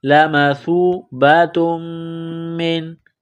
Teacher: تا کو میم کے ساتھ ملانا ہے، میم مشدد ہے، غنہ کریں گے، نون ساکن کے بعد عین ہے، حروف حلقی ہے تو نون ساکن پر غنہ نہیں کریں گے۔